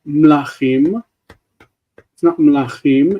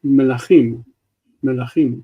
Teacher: If the mem is at the beginning of a word and it has a shva, you tend not to blend it into the next word.